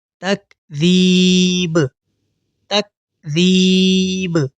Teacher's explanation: اس کو تکذیب نہیں پڑھیں گے، یعنی با کے اوپر ہماری آواز ختم نہیں ہوگی، بلکہ با کے اوپر ایکو ساؤنڈ کی آواز پیدا ہوگی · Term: قلقلہ